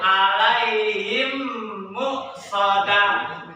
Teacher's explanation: mim sukun ketemu mim. Ya, jadi dibacanya gunah. Jadi digunain, ditekan dulu.